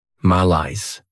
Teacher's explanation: This word has 2 syllables, and the stress is on that second syllable.